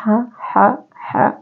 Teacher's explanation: Ha adalah wastul halki atau pertengahan tenggorokan.